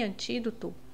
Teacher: antídoto a mais forte é o ti é a antepenúltima então é uma proparoxítona Lembrando que toda proparoxítona é acentuada que